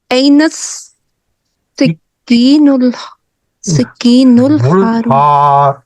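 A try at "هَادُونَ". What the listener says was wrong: हादू. हाँ, दाल है. नहीं, दाल है ये.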